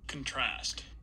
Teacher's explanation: we get a boost in overall intensity and then this final syllable for the verb form of the sequence is going to be longer as well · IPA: [kənˈtʰɹæst]